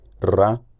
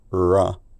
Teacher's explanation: here he's distinguishing between a Trill ra and probably some kind of approximant